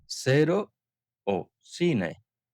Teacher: Delante de E o I puede sonar como una Z, como en cero, cine, pero esto es en España. En Latinoamérica sonaría como una S, sería cero o cine.